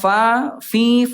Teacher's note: bibir dalam bagian bawah disentuhkan dengan ujung gigi seri atasnya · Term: huruf fa